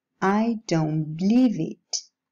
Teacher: The alveolar sounds change into the bilabial ones under the influence of the following bilabial sound.